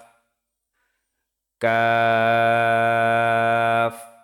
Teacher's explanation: তারপরে আসি ফা নিচের ঠোঁটের পেট সামনের উপরের দুই দাঁতের আগার সঙ্গে লাগিয়ে উচ্চারিত হয় ফা তারপরে আসি কফ জিহ্বার গোড়া তার বরাবর উপরের তালুর সঙ্গে লাগিয়ে উচ্চারিত হয় কফ তো কাফের উচ্চারণ হচ্ছে জিহ্বার গোড়া থেকে একটু আগে বাড়িয়ে তার বরাবর উপরের তালুর সঙ্গে লাগিয়ে উচ্চারিত হয় কাফ।